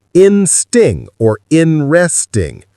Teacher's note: The middle and s basically merge into one sound, interesting. Some people even drop the t, insting or inresting.